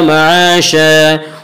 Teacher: माशा अलिफ मद्दा, अलिफ हमेशा मद्दा होता है, अलिफ से पहले ज़बर होता है। अलिफ मद्दा को एक अलिफ के बराबर खींच कर पढ़ेंगे।